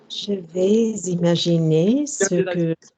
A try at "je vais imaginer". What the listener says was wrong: je vais imaginer. Don't do that link. Je vais imaginer. I don't like je vais imaginer. No, je vais imaginer.